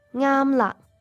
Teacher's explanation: It ends with a glottal stop, K. So you're pronouncing the ending K with your throat but not with your lips or teeth.